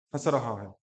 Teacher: वह व्यक्ति हंस रहा है ऐसे नहीं बोलेंगे, व्यक्ति हंस रहा है। तो हल्की सी एक नासिका से आपकी वायु निकल के हल्की सी ध्वनि आती है, लेकिन वायु नासिका के साथ साथ आपके मुख से भी बाहर निकलती है।